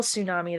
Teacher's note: >> Even though we spell tsunami that way. We don't say the T.